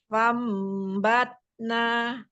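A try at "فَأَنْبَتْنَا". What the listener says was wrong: ada hamzah ya Umi. Fa'ambatna.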